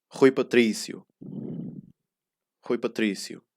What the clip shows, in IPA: ˈʁuj pɐ.ˈtɾi.sju